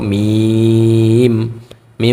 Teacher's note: মিম উচ্চারণের সময় আমরা দুইটা ঠোঁট একসাথে মিলিয়ে ফেলবো, যখন মিম উচ্চারণ করব, মিম, মিম বলে দুইটা ঠোঁটকে আমরা একসাথে মিলিয়ে ফেলবো, তাহলে উচ্চারণটা সুন্দর হবে।